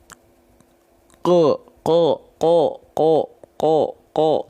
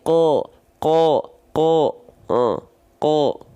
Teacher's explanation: dia isti'la dan buka mulutnya tanpa senyum. Udah itu cara melafalkannya. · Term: buka mulut tanpa senyum